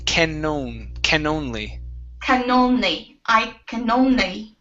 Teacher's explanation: so here you had dropped your N sound, saying ka only. Okay, so pronounce that N, can only.